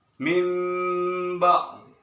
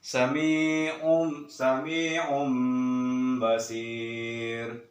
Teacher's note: Cara bacanya mimba, agak ditahan dia, karena dia itu membalikkan atau mengganti iqlab dari nun bertemu dengan ba itu didengungkan, jadi mimba, agak ditahan.